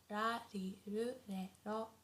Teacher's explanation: the R sound is not as harsh as in English. So it's not like R, not like R, but it's very soft in between L and R